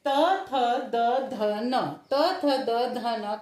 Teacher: त थ द ध न का जब हम उच्चारण करते हैं तो जीभ हमारे दांतों को स्पर्श करती है